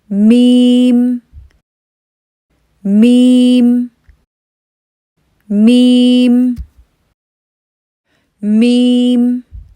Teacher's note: दोनों होठों को हम मिलाएंगे मीम की अदायगी शुरू करेंगे उसके बाद हमारा मुंह थोड़ा सा खुलेगा और फिर वापस बंद हो जाएगा